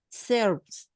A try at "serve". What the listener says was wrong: No, without S, no. With S, no. Serve. La E al final no suele pronunciarse. Okay, so we got the pronunciation until serve, until the V. Serve. We don't pronounce the E at the end. Take, we don't pronounce the E at the end. So the E, la E, the E at the end is silence.